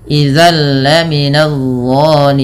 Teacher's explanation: idzalla minadimin idalla ada bacaan Idam bila gunah yang di mana bunyi tanwinnya dimasukkan langsung ke huruf lam nah Idam bilaguna juga dikenal dengan Idgham Kamil idgham yang sempurna